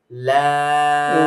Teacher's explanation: উপরে দাঁতের গোড়ার সঙ্গে গিয়ে লাগবে